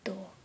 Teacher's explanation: this type of D is dentalized